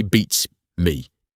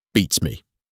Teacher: To say it correctly, push the emphasis hard onto the first word and let the second word drop in volume.